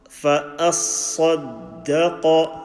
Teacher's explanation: Sad full mouth, dal empty, qaf full mouth.